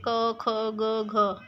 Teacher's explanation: क वर्ग की ध्वनियां कंठ ध्वनियां आती है। · का वर्ग हमारे कंठ को टच करते हैं, स्पर्श करते हैं